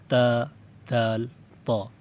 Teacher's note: جب زبان کی نوک اوپر والے سامنے کے 2 دانتوں یعنی ثنایا علیا کی جڑ پر لگتی ہے تو 3 حروف ادا ہوتے ہیں، تا، دال، طا۔ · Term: حروف نطعیہ